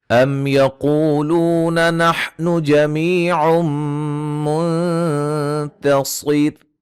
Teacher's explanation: میم ساکن کا اظہار، قاف کو موٹا، و مدہ، لو و مدہ، یا مدہ